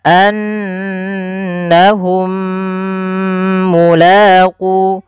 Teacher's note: mim Yang Pertama masukkan yang mim kedua kemudian ditahan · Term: idgham mimi